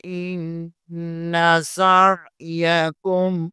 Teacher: نون مشدد ہے، یہاں پر غنہ لازمی ہوگا